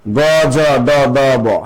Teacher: তাহলে বলবে যে ক চ শ্বাস কম লাগে অল্প প্রাণ